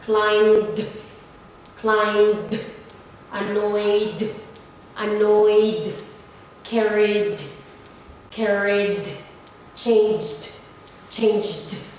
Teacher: So as you notice here, the b, the y, the e, and then the j, they are voiced. They are vibrating. So you have to pronounce the ed as d.